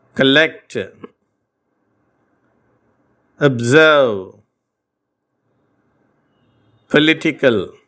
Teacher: இந்த வார்த்தைகள் எல்லாம் பார்த்தீங்கன்னா ஓ என்ற எழுத்து அ என்ற லேசான உச்சரிப்பை பெற்றிருப்பதை கவனித்திருப்பீர்கள் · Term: மெல்லிய அ